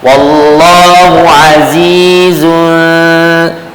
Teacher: makhraj bagi huruf z di mana hujung lidah belakang gigi kacit sebelah bawah